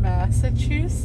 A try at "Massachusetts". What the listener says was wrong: You forgot the T's.